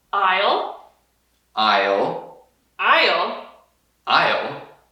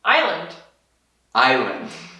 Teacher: E aí uma palavra que eu uso com frequência, I hear it often said incorrectly, it is island. So this S, we just don't pronounce it.